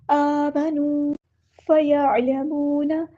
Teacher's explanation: عین کو مستحلق سے ادا کرنا ہے، واو مد آ گیا تو الف کے برابر لمبا کرنا ہے۔